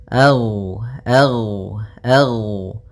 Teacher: ag ag Gin termasuk salah satu sifat huruf yang dia adalah sifat rakhawah yang di mana suaranya mengalir